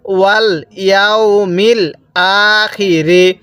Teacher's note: হামজায়ের উপর খাড়া জবর, এজন্য আমরা এক আলিফ টান দিব। মিম লাগবে এই লামের সাথে, মিল।